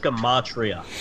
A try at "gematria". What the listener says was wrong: I'm gonna not correct you, but I'm just gonna say it's not called geometry. Right, it's gematria, but okay.